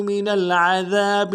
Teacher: من العذاب میں عین کو موٹا کریں گے, ذال کو باریک ادا کریں گے , ذال کے ساتھ الف مدہ ایک انداز میں کھینچیں گے.